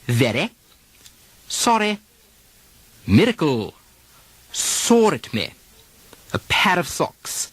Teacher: in some very aristocratic speech, you'll hear a tapping of the R, a sort of a D substitution. Very, sorry, miracle, saw at me, a pair of socks.